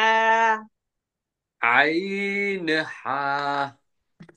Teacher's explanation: হলকের মধ্যখান হইতে আইন হা।